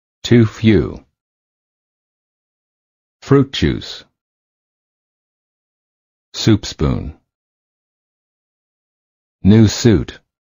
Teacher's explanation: the lips are tense and rounded as if you're blowing a balloon, and the tongue is slightly tense and raised high. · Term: oo sound